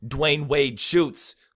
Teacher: those are all stressed syllables okay because mostly they're all three it's three different words right